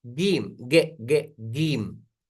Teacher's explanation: ada orang Arab yang baca huruf Jim gim ge ge gim jadi kayak Kaf